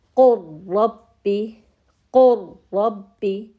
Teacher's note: نون اور لام، اب اس میں ادغام ہوگا، پوری مرچنگ ہوگی، لام ساکن ہے، لام کی کوئی صفت باقی نہیں رہے گی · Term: ادغام متقاربین تام